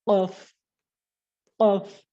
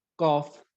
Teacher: জিহ্বার গোড়া এবং উপরের তালু যখন আপনি একসাথে ধাক্কা দিবেন একটা এক্সট্রা আওয়াজ আসবে যেমন কফ কফ দেখেন আমি যদি এভাবে বলতাম কাফ তাহলে কিন্তু